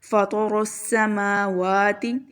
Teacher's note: تو اسے پڑھیں گے ہم لوگ سین کی آواز، ٹھیک ہے، رو بہت موٹا، سین کی آواز سیٹی کے ساتھ